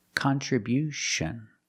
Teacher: at the end with t io n you hear the sound sh like she and shu.